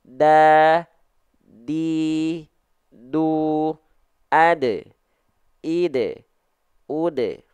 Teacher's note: huruf dal itu ujung lidah nempel ke pangkal gigi sari atas kita